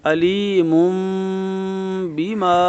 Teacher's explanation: مم یعنی میم کے پیش کو دوسری میم سے ملا دیں گے جو اوپر چھوٹی سی موجود ہے